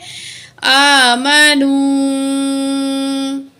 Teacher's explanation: नून पेश वाव, नू, वाव साकिन है पिछले अल्फाज पे पेश है तो ये क्या है? वाव मद है, 1 काउंट खींच के पढ़ेंगे।